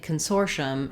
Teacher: we have the stress in the sore syllable